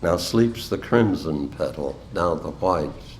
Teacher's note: I at one time stressed rhetorically the opposing adjectives crimson and white